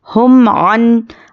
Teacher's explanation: मीम पर जज़म और उसके बाद आइन आया है तो यहाँ पे क्या है इजहार शफवी का क़ायदा है, तो यहाँ पर मीम को ज़ाहिर करके जल्दी पढ़ेंगे · और यहाँ पर नून पर जज़म और उसके बाद हुर्फ इख्फा आया है तो हम यहाँ पर नून की आवाज़ को नाक में छुपा कर पढ़ेंगे